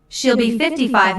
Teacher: Notice that 55 is stressed here. This detail answers the question, how old is she?